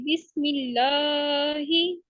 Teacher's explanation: लाम को हम 2 फिंगर काउंट करेंगे, यानी कि दोनों फिंगर्स को जब तक उठा नहीं लेंगे तब तक हमने लाम की आवाज अदा करनी है